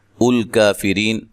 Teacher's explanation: را کو باریک پڑھنا ہے